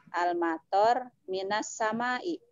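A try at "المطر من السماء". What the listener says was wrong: Jangan bisu di akhir. Semua. Kalau tidak wakof, kalau tidak sukun jangan dibaca sukun. Misalnya kalau ro itu tidak sukun jangan tor gitu. Kan kalau misalnya tidak sukun maka pilihannya apa? Toru, apa toro, apa tori gitu.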